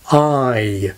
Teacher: in a word like 'eye' the vowel begins with a very open quality, a bit like the vowel quality in 'arm' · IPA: [ai]